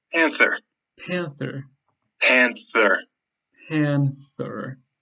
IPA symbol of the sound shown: θ